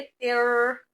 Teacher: यहाँ पर गुना नहीं करना, बल्कि तनवीन को रॉ के साथ मर्ज कर देना है